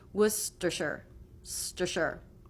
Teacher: Tongue will go to the roof of the mouth for the T, Worcestershire. Now, the second two syllables have the schwa, so we need basically no jaw drop for those